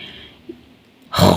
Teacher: इब्तदा हलक से यानी हलक का शुरू वाला हिस्सा जो हमारे मुंह की जानिब है